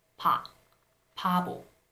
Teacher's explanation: first the initial at the head of a word then it's this weird neutral sound that is somewhere in between the B and the P no voicing minimal aspiration